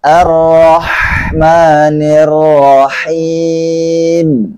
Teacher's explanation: Karena di sini Ra-nya tidak memakai dhammah, maka bibirnya dibuka saja seperti biasanya.